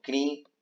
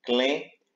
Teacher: o I nasalizado tornando-se E nasalizado em outras palavras